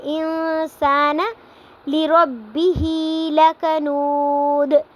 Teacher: لکنود پہ واو مدہ ہو رہا ہے کیونکہ واو ساکن سے پہلے پیش آ رہی ہے